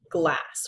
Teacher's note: We've got an ah sort of sound in the word glass. That would be a short A sound.